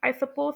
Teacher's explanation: इसमें एक आती है फॉल राइस इंटोनेशन यानी इंडिकेट करती है गैर वाजन को जब आप शोर नहीं होते या फिर पोलाइट को भी इंडिकेट कर सकती है मिसाल के · कैसे पहले जो है आवाज का जो है एक तरह से उतार आ रहा था फिर उसके बाद चढ़ाव आ गया है